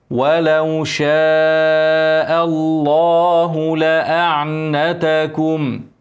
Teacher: اسم الجلاله مفخمه عشان قبلها مفتوحه افخم اللام كويس